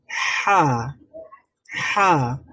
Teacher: মাখরাজ হচ্ছে এটাকে আরবিতে হলক বলা হয় হলক মানে হলো কণ্ঠনালী কণ্ঠনালীর মধ্যভাগ থেকে উচ্চারিত হয় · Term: হা এর মাখরাজ